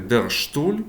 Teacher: поєднання літер с та т. Часто воно вимовляється як ш